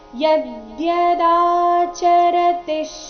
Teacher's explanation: ಯ ಮೇಲೆ ಆಘಾತ ಮುಂದೆ ದಿಯ ಇದ್ದ ಕಾರಣ